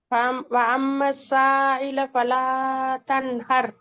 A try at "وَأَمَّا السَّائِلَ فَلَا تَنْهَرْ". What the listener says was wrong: அதுவும் பிழை. நீங்க ஓதுறது பிழை. நீங்க ஓத வானம். நீங்க நீட்டுறதுல பிழை விட்டீங்க. நீங்க நீட்டுறதை பத்தி நான் திருப்பி படிக்க வேண்டி வரும். இந்த அவ்வளோ பிழை வருது.